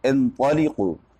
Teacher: طا مفتوح ہے لیکن اس کے بعد الف نہیں ہے تو اس کی وجہ سے تفخیم میں تھوڑی کمی آ گئی